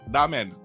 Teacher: Jepun tak ada L, Jepun tak ada R. Dia ada antara dia tengah-tengah. So macam ramen ni, dia tak ada R, dia ramen.